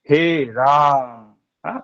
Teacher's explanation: जब राम बोलेंगे तो हम अधिक देर तक राम को उच्चारण करेंगे, हे राम, उसको लंबा खींचेंगे। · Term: प्लुत स्वर